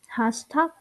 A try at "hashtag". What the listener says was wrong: Yeah, so you need the sh, not the s. It's hash, not hashtag.